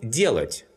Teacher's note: the stress falls on the first syllable and not on the last one